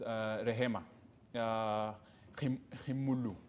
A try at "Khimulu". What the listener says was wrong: The H is silent. It's silent. It's Khimulu. It can work as well. It can work as well.